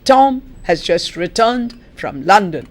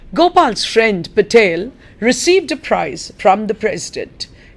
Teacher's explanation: the accented words come almost at equidistance from each other and this what gives it the rhythm